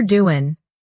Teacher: The final G in doing almost disappears. It's softer doin', and that's perfectly natural English.